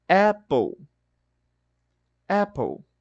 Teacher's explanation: quando o som do a o a é curto ele vai ter esse som de e